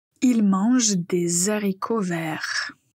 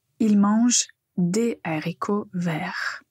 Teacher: le mot haricot commence par un h aspiré, ce qui signifie qu'il n'y a pas de liaison avec l'article ou le mot qui le précède